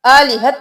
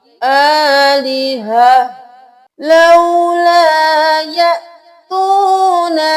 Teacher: यहाँ पे जब भी गोलता आएगी तो उसकी हरकत भी गिर जाएगी और ता हा में बदल जाएगी